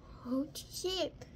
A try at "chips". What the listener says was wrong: Get the S at the end.